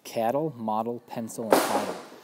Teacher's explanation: L-E, E-L, A-L, and I-L. That's an unaccented sound with a schwa and then an L. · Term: ul sound